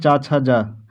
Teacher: च छ ज झ आदि का उच्चारण स्थान किससे होगा? तो ये होगा तालव्य से